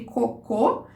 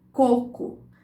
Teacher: entre cocô, que tem esse O pleno, e coco, que você tem um O reduzido